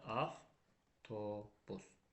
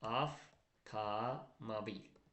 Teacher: Hansı sözün tərkibində avto varsa, bilin ki, avtodakı v, f kimi tələffüz olunacaq.